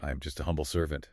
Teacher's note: We all know that voice. The spiritual voice. Soft, a little whispery, almost breathy.